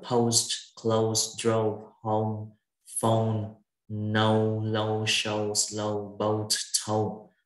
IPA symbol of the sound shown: əʊ